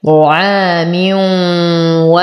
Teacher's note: طعام ألف ساكنة ما قبلها مفتوح فهو من الطبيعي حركتين، نفخم الطاء. لدينا تنوين كسر وبعده حرف الواو، فالحكم إدغام مع غنة